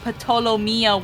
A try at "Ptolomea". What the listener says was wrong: Ptolomea, the P is silent. Like a pterodactyl.